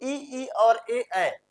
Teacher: जीभ का अगला भाग काम कर रहा है